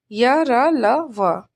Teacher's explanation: इनका उच्चारण स्वर और व्यंजन के मध्य का सा लगता है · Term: अंतस्थ व्यंजन